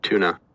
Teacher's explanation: Fronted ooh because it's in between 2 alveolars, basically.